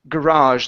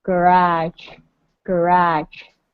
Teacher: The stress is on the very end.